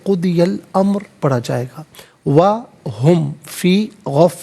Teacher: را پر پیش، را کو پر کر کے پڑھا جائے گا